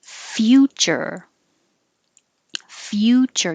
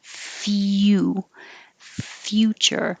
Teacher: your tongue starts very high in the y position